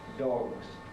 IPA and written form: dɒgz (dogs)